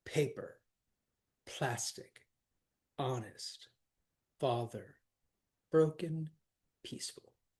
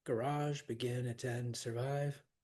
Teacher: A trochee is the opposite of an iamb. Instead of a foot of poetry with an unstressed syllable followed by a stressed, it's stressed first, then unstressed. Going back, the first column are all trochees: paper, plastic, honest, father, broken, peaceful.